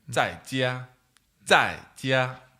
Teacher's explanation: I think the problem is the fact that the fourth tone is like high, then to low, and then the first tone is high again. So like very up and down, a lot going on, right?